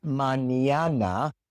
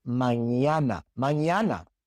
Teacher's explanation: But when you pronounce the n, you put the back of your tongue on the roof of your mouth. So it is not n it is nña manana.